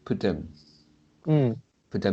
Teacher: you just pronounce as poo and then quickly stick together with them